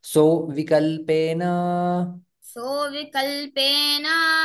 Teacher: यहा पर संधि हो जाती है विसर्ग का ओ में परिवर्तन आ जाता है